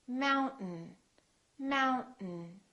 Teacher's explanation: and the vowel disappears so we say Mountain don't say Mountain don't release your tongue keep it up and just go directly to the n